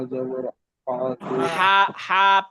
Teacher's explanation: হা একদম গলার মাঝখান থেকে, কণ্ঠের মাঝখান থেকে, ভেতর থেকে।